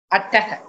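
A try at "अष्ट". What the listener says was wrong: Ashta. Ashtaha iti visargaha nasti. Please be careful because it does not have a visarga. It is ashta.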